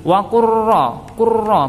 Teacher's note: Wa qurra bacaan idgham mutaqaribain sebab ada lam sukun bertemu ra. Dimasukkan ke huruf ra-nya tanpa membaca lamnya, tapi dengan penekanan karena di sini ada seakan-akan ada tasydidnya.